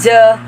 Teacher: is voice retroflex stop